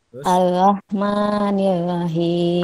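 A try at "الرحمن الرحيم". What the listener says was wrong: Panjangan.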